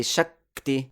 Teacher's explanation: When we chant and say Shakti, it sounds as if there are two k.